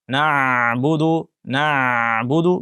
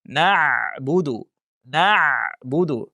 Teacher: ayn harfini talaffuz qilganda burun orqali g'unna tovushini chiqarib ketishi. Na'budu, na'budu, burundan ovoz chiqib ketishi.